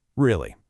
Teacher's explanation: For disapproval, keep your voice low and flat.